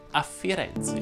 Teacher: Firenze va pronunciato con la E aperta e il raddoppiamento fonosintattico.